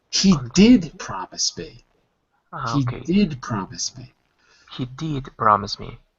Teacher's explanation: the emphasis is going to be on did